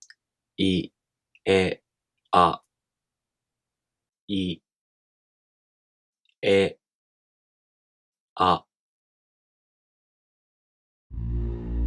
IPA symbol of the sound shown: e